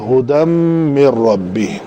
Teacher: 5 حروف ہیں تو یہ ادغام ناقص ہوگا، اس کا نون کا ادغام ہوگا میم کے اندر